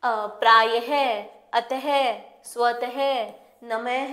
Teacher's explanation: जैसे कि प्रायः, अतः, स्वतः, नमः, यानी कि यह हमें हमारे शब्द को समाप्त होने के बाद ह की ध्वनि देता है। इसका प्रयोग हम ज्यादातर तत्सम शब्दों में करते हैं। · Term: विसर्ग